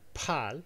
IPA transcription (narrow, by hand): pʰaːl